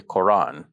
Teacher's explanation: this Hamza in the middle of the word, which I've just described as a glottal stop, is not pronounced.